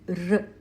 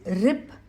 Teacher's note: it is a murdhanya or a cerebral sound since the air reflects off the roof of the mouth.